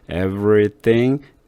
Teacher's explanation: every 할 때 여기다가 중성모음을 집어넣어도 되고 안 집어넣고 그냥 없애도 돼요. 잘 보세요. everything 천천히 읽으면 중성모음 들어가는 것 같아요.